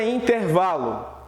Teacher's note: observe que no vá é como se eu tivesse dando uma voz mais forte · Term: sílaba tônica